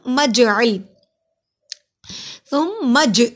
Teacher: جیم پہ قلقلہ ہوگا کیونکہ جیم جزم کی صورت میں ہے